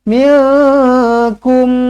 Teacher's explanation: nun kosong bertemu dengan kaf, ikhfa hakiki, dengungkan 2 harakat.